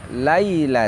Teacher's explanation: Ya Sukun setelah Fattah bunyinya sama dengan kasrah